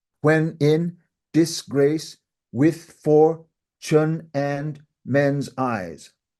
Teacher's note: those 10 syllables are broken down into five parts each part having two beats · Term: five feet